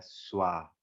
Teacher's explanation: Quando a gente tem esse encontro de S, V e A, fica mais o som puxado para o U, tá bem? Ao invés de ficar, como a gente fosse ler da nossa, que a gente conhece o som do V, seria vá, mas não é vá, é suá. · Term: som de U